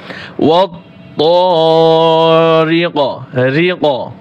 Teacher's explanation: ওয়াত তা যেন না হয়, ওয়াত ত মোটা করতে হবে।